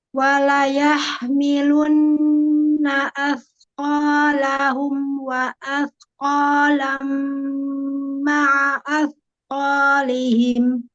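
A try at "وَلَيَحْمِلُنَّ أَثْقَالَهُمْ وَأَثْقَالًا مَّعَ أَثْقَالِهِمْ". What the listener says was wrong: Asnya belum bocor nih. Lebih lebih lebih keluar ujung lidahnya keluarin dikit lagi. Asko. Jadi as. Jadi lebih lebih ada bunyi hembus udaranya, oke?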